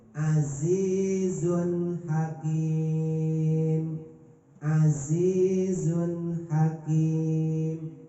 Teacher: Haknya hak kecil, jadi azizun hakim. Zunnya kudu jelas, nggak boleh disamarin, nggak boleh diikhfain, nggak boleh didengungin. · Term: idhar